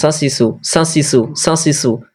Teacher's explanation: মাখরাজে যা সিন সদ এই 13 নম্বর মাখরাজে এটা আওয়াজ হয় জীবের আগা এবং সামনে উপরে এবং নিচের দুই দাঁতের আগার সঙ্গে লাগিয়ে উচ্চারিত হয়